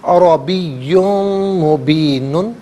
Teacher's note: کے پڑھا جائے گا، یا پر دو پیش کی تنوین ہے، اسے مبین کی میم کے ساتھ ملا کر میم کی آواز کو غننے کے ساتھ ادا کریں گے